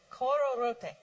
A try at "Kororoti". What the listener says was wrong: Do you notice how you are inflecting the end differently from what we are saying? Not that you should change. Just notice it. We are saying kororoti. You are saying kororote.